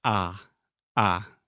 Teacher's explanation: if we want to be precise about it it is down and back think about this down and back this is hard to do